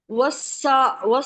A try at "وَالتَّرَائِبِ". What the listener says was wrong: تا، تا ہے، تا، واؤ کو تا سے، تا ہے نا، واؤ کو تا سے ملانا ہے۔